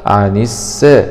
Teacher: لام سكون شمسية مدغمة في السين المشددة مع الفتح